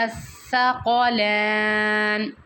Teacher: زبان دونوں دانتوں کے درمیان میں رکھیں گے اور سا پڑھیں گے، اور یہ سا پڑھتے ہوئے سیٹی کی آواز نہیں آنی چاہیے